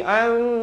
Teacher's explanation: Mim sabdu kena dukung 2 harakat.